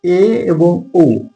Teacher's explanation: এ এবং ও এটা উচ্চ স্বরধ্বনির থেকে তুলনামূলকভাবে একটু নিচের দিকে যাচ্ছে, এজন্য এটাকে বলা হচ্ছে উচ্চ নিম্ন স্বরধ্বনি।